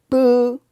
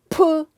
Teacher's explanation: 그래서 공기의 배출이 비읍은 적지역 브 움직이지 않아요. 그러나 피읍은 공기의 배출이 많아서 휴지가 움직입니다. · 비읍은 약하고 부드러운 소리예요. 피읍은 강하고 거친 소리. 그래서 공기의 배출이 비읍은 적지역 브 움직이지 않아요.